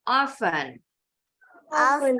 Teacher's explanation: di Inggris sama-sama [Tepuk tangan] sekarang gak pake t oven oven dua-duanya sama nih stressingnya ada di suku kata pertama